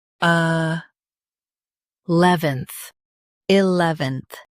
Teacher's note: Stress lev and keep enth light.